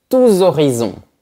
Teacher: on fait la liaison et on prononce Z